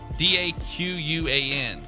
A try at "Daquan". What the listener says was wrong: Where'd you get the W? You said Daquan. It's Daquan.